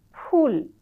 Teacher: তখন ফুলে কিন্তু দুই ঠোট মেলে না। এটা অষ্ঠধ্বনি হয় না। · দুই ঠোট একসঙ্গে মিলবে না। ইংরেজি এফ উচ্চারণ করবে।